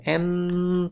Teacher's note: N tetap bunyi ya karena udara keluar dari hidung. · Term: bunyi nasal